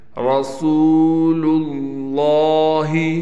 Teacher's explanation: را کو موٹا کر کے پڑھیں گے، سین کو ہم نے صاف طور پر ادا کرنا ہے